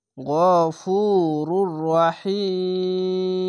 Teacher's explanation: গফুরুর রহিম, এখানে মিম দু পেশ মুন আছে, রহিমুন হতো, তো এখানে দেখেন আয়াত আছে থামতে হবে, তার জন্য রহিম 3 আলিফ টেনে পড়বেন, মাদ্দে আরজি হবে